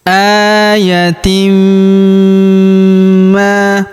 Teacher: Ayatim, kemudian tanwin in huruf tin bertemu huruf ma berharokat tasydid, maka tanwin innya melebur masuk ke huruf ma, kita tahan dan kita tekan serta kita dengungkan 2-3 harokat. Ayatim ma, kemudian huruf ma kita panjangkan 2 harokat karena terdapat alif di depannya.